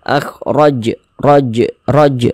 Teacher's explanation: Huruf jim termasuk salah satu huruf qalqalah, maka kita pantulkan kalau dia sukun. Akhraj, raj, mantul begitu.